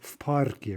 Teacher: The v is devoicing to become more like the unvoiced p.